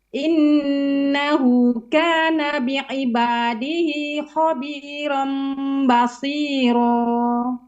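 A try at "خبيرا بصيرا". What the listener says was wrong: Shadnya tambah lagi. Basi.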